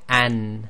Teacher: the front of the tongue presses against the area just before the gums. So this is not where the hard palate meets the teeth, it's just before, and this is equivalent to the English N, and we've got here an, and this is one where in some cases the sound goes into the nasal passage.